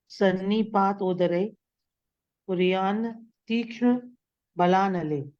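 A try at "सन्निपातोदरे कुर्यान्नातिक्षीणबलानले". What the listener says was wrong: तीक्ष्ण नहीं है, कुर्यान्नात, कुर्यान्नाति क्षीण बला नले, ऐसे क्षीण बला नले।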